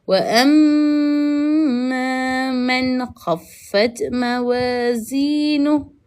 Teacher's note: Nun mati bertemu dengan kha. Hukumnya adalah izhar halqi. Jadi dekat sini kita nak kena jelaskan bunyi nun itu. Maka dekat sini kita akan baca dia seperti wa amma man khaffat mawazinuh.